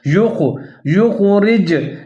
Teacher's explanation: جیم ساکن ہے، قلقلہ کریں گے یہاں پر کیونکہ حروف قلقلہ میں سے شامل ہے۔